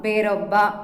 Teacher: ಬೇರೊಬ್ಬ ಇಲ್ಲಿ ಏಕಾರ ಲೋಪವಾಗಿದೆ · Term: ಲೋಪ ಸಂಧಿ